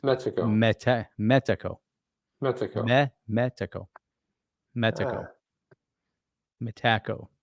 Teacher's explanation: the correct pronunciation of Metaco, you put more stress on the first syllable.